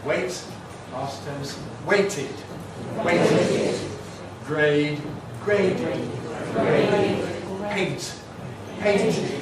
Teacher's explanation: It’s /t/ and /d/, the alveolar plosives. Here again, we have to insert a vowel, an /ɪ/ or an /ə/. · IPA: /weɪt/